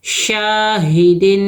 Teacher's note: گے ہا کو نہیں کھینچنا ہے شاہی دال دو زیر دن دال کے نیچے دو زیر کی تنوین ہے دو حرکت غنّے کے ساتھ پڑھیں گے